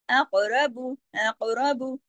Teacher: काफ मोटा भी पढ़ा जा रहा है और कफ कलकरे के साथ पढ़ा जा रहा है